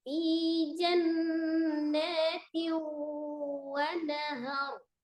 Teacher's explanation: kasrah tanwin bertemu dengan waw, idgham bi ghanna digunnahkan · Kemudian naha, ra-nya sukun, sebelumnya fathah di huruf ha, ra-nya berarti dibaca tafkhim atau tebal ya.